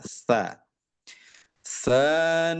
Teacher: huruf tsa itu ujung lidah berjumpa dengan gigi seri atas ya. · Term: huruf sa